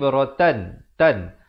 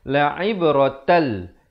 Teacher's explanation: Asalnya la'ib rotan, tan. Tapi bila datang lam jadi hukum idgham bila gunnah. Masuk tanpa dengung. Jadi kita terus masuk tal.